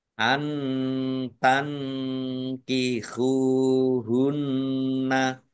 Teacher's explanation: nun sukun bertemu dengan huruf Kaf juga bacaan Ikhfa dibaca samar-samar